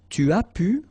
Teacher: Remember, you don't pronounce the S here.